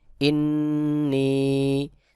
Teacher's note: নুনের উপর তাশদিদ রয়েছে এখানে ওয়াজিব গুন্না হবে